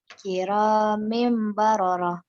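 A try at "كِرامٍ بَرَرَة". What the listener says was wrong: Mimnya ditahan. Iklab itu kira mim baroro. Kayak ada ngawahan heula.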